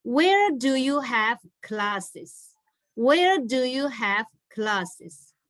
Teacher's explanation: So your tone will be falling tone